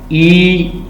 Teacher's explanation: आपने मुंह से कहें ई तो आपको ऐसे फील होगा कि आपके जो लिप्स हैं वो इस साइडों पे हो रहे हैं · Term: लिप्स स्प्रेड